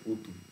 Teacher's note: ঋতু শব্দটা পালিতে হয় উতু, রি এর জায়গাতে উ হয়